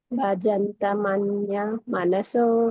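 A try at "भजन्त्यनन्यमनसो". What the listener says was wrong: ఇక్కడ భజంతి అనన్య మనసు, ఆ మూడింటిని కలిపారు అక్కడ. భజంతి అనన్య మనసు.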